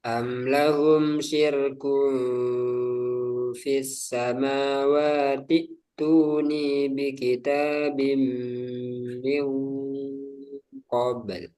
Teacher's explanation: Jadi hamzah wasalnya ketika dibaca disambung ini tidak kebaca lagi. Fis samawati langsung ke hamzah kedua.